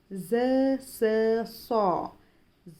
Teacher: ज़बान की नोक अगले ऊपरी और निचले दांतों को मिलाने से ज, स, सौ अदा होते हैं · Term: सीटी वाले हुरूफ